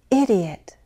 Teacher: The rise-fall intonation pattern uses a sharp rise before the fall. By sharp, I mean it's quick and it's high. · By sharp, I mean it's quick and it's high. We use this rise-fall combination to express strong emotions